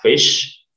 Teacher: voiceless jadi yang tidak bergetar di tenggorokan sini ya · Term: voiceless phonemes